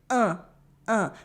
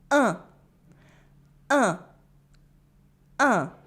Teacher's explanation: The back of your tongue is still at the back of your mouth, blocking the air to make it pass through your nose. But contrary to on, the tip of your tongue is forward and you're smiling.